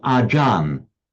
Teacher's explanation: The A is the same. The Ch in modern Thai phonetics tends to get pronounced as a J. The A will remain the same.